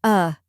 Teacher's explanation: a quick unstressed sound like the a in sofa